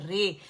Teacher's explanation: را کو ہم نے کیا کیا, فتح اس کی کسرہ کی طرف ایسے مائل کیا, اور الف کو یا کی طرف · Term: یا مجہول